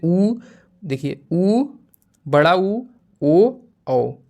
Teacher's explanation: होठों का आकार जो है क्या हो जाता है? गोल हो जाता है। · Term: वृत्ताकार स्वर